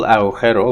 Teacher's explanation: So it's spirantized, fricativized. It means the voiced velar plosive becomes voiced velar fricative intervocalically in Spanish